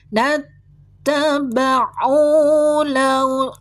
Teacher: Dibaca mad thabi atau mad asli dua harakat enggak boleh lebih.